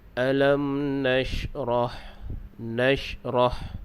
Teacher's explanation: Ha ini makhrajnya adalah di pertengahan kerongkong. Jadi bila kita sebut ha, pastikan keluarnya di bahagian tengah kerongkong. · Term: huruf ha